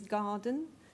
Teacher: it's got a strong first syllable and a weak second syllable because we put all the stress on the gar part of garden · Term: strong weak pattern, strong, weak pattern